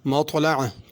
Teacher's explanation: مطلع طا کو پر کر کے پڑھنا ہے، مطلع نہیں پڑھنا۔ مطلع عین پڑھنی ہے، مطلع حمزہ نہیں پڑھنا۔